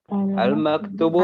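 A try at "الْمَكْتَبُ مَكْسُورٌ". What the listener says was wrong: Oke, jangan al-maktub. Kalau al-maktub nanti yang ditulis gitu ya. Namamu maktubun, namamu ditulis, beda ya. Sekali lagi, al-maktabu maksurun.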